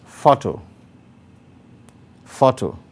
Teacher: because photo is a noun the stress is on the first syllable